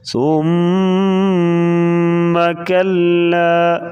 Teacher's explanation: ثم میم کے اوپر شد آ گیا تو یہاں پر غنہ کر کے پڑھیں گے. نون اور میم کے اوپر شد ہوگی تو ہمیشہ غنہ کر کے پڑھا جاتا ہے.